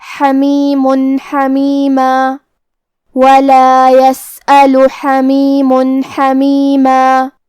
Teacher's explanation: ہم یہاں تنوین ظاہر کریں گے اور اسے نون ساکن پڑھیں گے اور بغیر غنہ سے یہ حکم کو ادا کریں گے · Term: ابہار